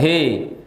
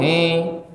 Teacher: Sempurnakan kasarnya hi, jangan he. Jangan juga masuk ke hidung